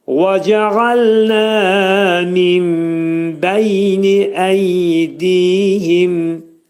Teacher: وَجَعَلْنَا da vəf hərfi, dodaqlar qönçələnir